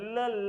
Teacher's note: म्हणताना दातांचा वापर होतो, याला म्हणतात दंत्य वर्ण